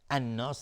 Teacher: الف لام شمسی و نون تشدید دار، دو حرکت غنه